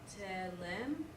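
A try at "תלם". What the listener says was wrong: But put the accent on the ta. So it's it's tehlem. Tehlem.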